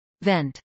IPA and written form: vɛnt (vent)